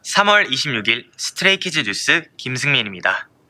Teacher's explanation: That is some nice, smooth intonation. See how it goes slowly and evenly downward to the end?